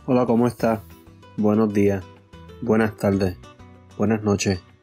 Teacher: they don't fully pronounce the S's at the end